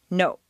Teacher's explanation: in Spanish or Japanese the word no is to our ear clipped or abbreviated